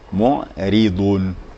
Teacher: Ini ra bertemu dengan berdekatan dengan dhad. Dhad itu adalah huruf tebal, itbaq. Ya, sedangkan ra baris bawah tarqiq.